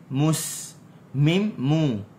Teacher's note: Mim bagi depan mu kena muncung.